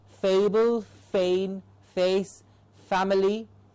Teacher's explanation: only the lower lip and the top teeth come in contact